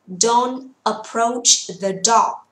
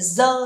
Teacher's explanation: âm th sẽ phải thò lưỡi trong tiếng Anh